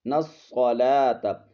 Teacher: پیش یو، قاف یا زرقی، وَيُقِی، میم واو پیش مو، وَيُقِیمُ، آگے نون کو ہم نے صاد کے ساتھ ملانا ہے، یہ الف لام کو ہم نے چھوڑ دینا ہے ، اس کو نہیں پڑھنا، نون صاد زبر نص، صاد زبر